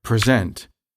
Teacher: For example, in English, in the verb present, meaning to give a presentation, we say the last syllable with more emphasis than the first one, since it is the stressed syllable